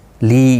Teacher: لی یا مدہ ہے، ایک الف کی مقدار کے برابر کھینچ کر پڑھیں گے